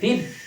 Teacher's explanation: ফির র উচ্চারণের পরে ফির যতটুকু সম্ভব বাতাস বের করার চেষ্টা করবেন, নইলে অর্থ চেঞ্জ হয়ে যাবে।